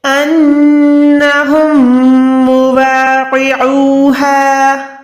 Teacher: نون پہ گننا کریں گے، میم پہ گننا کریں گے، قوف کو موٹا رکھیں گے، عین کو حلق کے درمیان سے ادا کریں گے